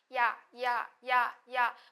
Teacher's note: 얘를 좀 천천히 해보면 야, 야, 야, 야, 뭔가 모르게 이 앞에 약간 이 같은 게 들어있는 느낌이 좀 들어요. 그 소리, 뭔지는 모르겠지만 그 소리, 이 소리를 반모음이라고 이야기를 합니다.